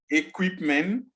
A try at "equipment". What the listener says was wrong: There is T at the end, so you must say T. Equipment.